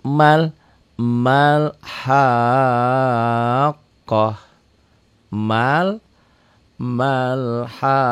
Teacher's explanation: ini enggak dibaca panjang kenapa enggak dibaca panjang Karena Ma ini ketemu alif lam qamariah